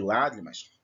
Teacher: Mas no caso, lágrimas, a sílaba tônica é no lá, e lá se encontra na antepenúltima, última, penúltima, antepenúltima.